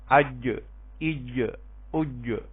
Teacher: جیم، شین اور یا یہ زبان کے درمیانی حصے سے ادا ہوگی اور اس کے بالمقابل اوپر کے تالو سے. یہ تینوں حروف شجریہ کہلاتے ہیں.